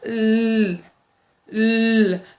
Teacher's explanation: The alveolar is very obvious because the tip of the tongue goes straight up l, to the alveolar ridge.